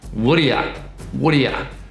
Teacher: Also, the 'r' just becomes 'uh', so it becomes wha de ye